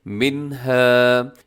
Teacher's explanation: ہے، یقبلو جو کہ یہ ٹھیک نہیں ہے، ولا يقبل منها، نون ساکن کے بعد حروف حلقی ہا ہے تو یہاں پر اظہار ہوگا